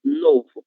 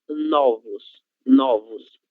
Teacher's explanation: a palavra novo no singular, a letra O ela é fechada, novo. Agora, no plural, será novos, novos. A letra O ela se torna aberta.